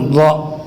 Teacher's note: زبان کے کنارے اگر سائڈ والے دانتوں کے ساتھ لگ جائے تو ض ادا ہوگا